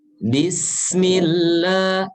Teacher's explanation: jangan lupa bahwasanya huruf sin itu harus dialirkan. Bismillah, tapi tipis ya.